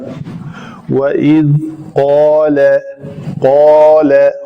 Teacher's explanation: وَإِذْ قَالَ قوف کے لیے لوتھڑا جو ہے جس کو کوا کہتے ہیں وہ بالمقابل تالو کے ساتھ لگے تو قاف ادا ہوتا ہے · تو واو کے لیے ہمیشہ میں کہتا ہوں شفتین گول، زال کا مخرج ہے نوک لسان جب اسنایا اولیاء یعنی اوپر والے دو دانتوں سے آ کے لگتی ہے تو اس کو کلکلا نہیں ہونے دینا۔